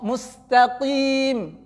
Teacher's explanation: Tetapi tetap dibaca di makhraj qaf, jangan dibaca di makhraj kaf. Qaf di pangkal lidah. Kaf itu di depan qaf makhrajnya. Jangan sampai ringan kali qaf itu sampai jadi kaf.